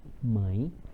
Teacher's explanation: o e tem som de i, começa a ter um som de i. O an é vogal. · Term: semivogal